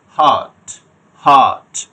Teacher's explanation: এই শব্দে কোনো আর প্রনাউন্স হবে না, একটু লম্বা, এটা টেনে পড়া যেহেতু লং ভাওয়েল।